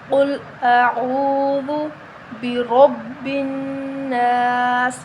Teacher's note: را کو موٹا پڑھیں گے، را کے اوپر زبر ہے، ٹھیک ہے؟ با پر تشدید ہے تو با 2 مرتبہ پڑھا جائے گا، ٹھیک ہے؟